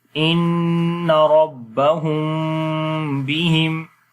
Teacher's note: تو پڑھیں گے ان ربہم بہم، تو یہاں پر بھی میم کی آواز کو ناک میں چھپائیں گے اور میم کو نرمی کے ساتھ پڑھیں گے، سختی کے ساتھ نہیں پڑھیں گے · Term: اخفاء شفوی